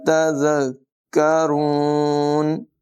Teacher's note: زال کو بغیر سیٹی کے پڑھیں گے، کاف کو زال کے ساتھ ملا کر ذرا رک کر ادائیگی کریں گے. را کی آواز پر ہوگی، کاف کو باریک پڑھیں گے